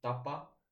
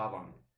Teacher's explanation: And then in the second case, it shifts into the tavan. So the P turns into a V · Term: consonant gradation